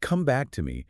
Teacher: Important words get emphasis when he says, "Come back to me." The stress on back carries so much weight.